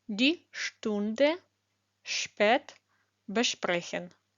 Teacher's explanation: перед буквами п та т на початку слова та кореня як українське ш